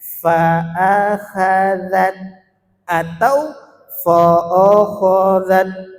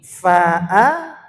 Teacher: Kho di sini tebal di antara huruf-huruf yang tipis